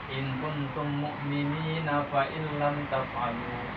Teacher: Jadi kalau kita mau wasol, panjangnya jangan panjang-panjang, jangan mad alif disukun, tapi mad tabi'i.